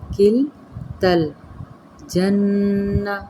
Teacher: نون مشدد پہ غنہ کریں گے